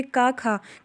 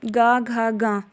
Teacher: जैसे का खा, का वर्ग का का और खा, तो ये हमारे अघोष होंगे, और गा घा गा ये हमारे घोष होंगे।